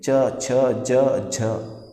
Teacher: च बोलने में क्या हो रहा है, जो आपके मुंह के जो अंदर हवा है वो संघर्ष करते हुए बाहर निकल रही है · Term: स्पर्श संघर्षी